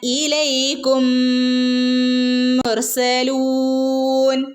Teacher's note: മീമിന് ശേഷം മീം വന്നാൽ എന്ത് ചെയ്യണം മണിച്ചു കൂട്ടി ചേർത്ത് ഓതണം